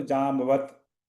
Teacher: जामवंत में व के साथ थोड़ा सा न का साउंड है। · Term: अनुस्वार